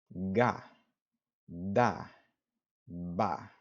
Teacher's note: the G D and B sounds have a little bit of a vibration before your lips even part